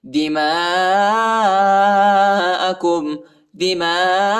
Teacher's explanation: میم کے بعد جو الف ہے اس کے اوپر بڑا مد ہے، اس کو تقریباً 3-4 سیکنڈ تک کھینچیں گے۔